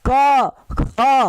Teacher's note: कम जो अल्प प्राण में है वो कम सांस ज्यादा सांस, कम सांस ज्यादा सांस, जैसे क कम सांस, ख खुद तुम बोल के देखो, खुद तुम बोल के देखो, क ख, अब तुम खुद देखो ज्यादा सांस कहाँ ले रहे हो, ख पे ले रहे हो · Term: महाप्राण